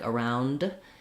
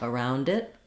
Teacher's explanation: unless we're linking it to a vowel, like around it, then you clearly say your D. Otherwise, you're going to have an unreleased D there.